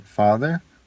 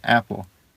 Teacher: the a is a as in father or the O as in top it is not the a in apple